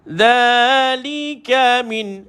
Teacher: Dha hujung lidah dikeluarkan pada dha.